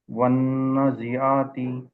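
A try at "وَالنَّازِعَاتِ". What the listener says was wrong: ఇక్కడ కూడా అలిఫ్ సగీరా చేయలేదు.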